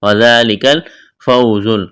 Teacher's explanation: واو ساکن سے پہلے زبر ہے، واو لین ہے، بغیر کھینچ کے پڑھیں گے، زا میں سیٹی کی آواز پیدا کریں گے۔